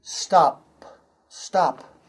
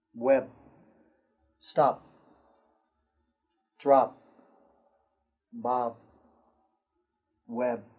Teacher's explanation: Sometimes you don't hear p or b clearly at the end of a word.